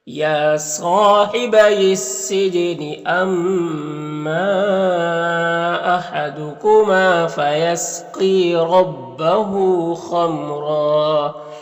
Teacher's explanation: मीम में इज़हार शफवी हो रहा है और रॉ में दो ज़बर है तो दो ज़बर पे वक्फ करते हैं तो एक ज़बर के साथ अलिफ पढ़ते हैं और रॉ को पुर पढ़ेंगे